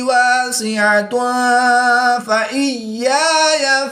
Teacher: دو پیش کی تنوین کے بعد فا حروف اخفا میں سے ہے، تو یہاں پر اخفا ہوگا، یعنی غنہ زمانی کر کے پڑھیں گے۔